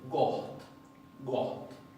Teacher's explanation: Esto no se pronuncia got, se pronuncia goht, goht, goht. Fíjense que la G arranca dura, fuerte.